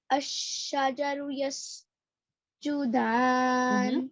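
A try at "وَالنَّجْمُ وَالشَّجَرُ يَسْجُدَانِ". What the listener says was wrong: والنجم. والشجر. There's wa.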